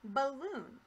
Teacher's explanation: The A here in balloon is a schwa because it doesn't sound like its normal short or long vowel sound.